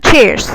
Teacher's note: Pronunciation, it's flat, one syllable, cheers. Cheers ya. Jadi R-nya hilang, cheers ya.